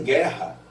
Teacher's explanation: Em guerra, por exemplo, o som do U não aparece. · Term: som vazio